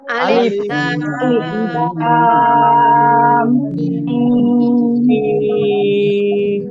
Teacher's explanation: লামের উপরে চার আলিফ টান, মিমের উপরে তারটি, তার উপরেও চার আলিফ টান।